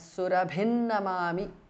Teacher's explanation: Surabhim ends in anuswara followed by na, so it becomes surabhin namami. Anuswara changes to na.